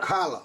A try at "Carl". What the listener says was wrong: Carl. Not Carla, just Carl. Carl.